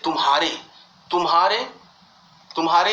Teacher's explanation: लेकिन तू पर ज्यादा जोर नहीं दिया जा रहा है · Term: लघु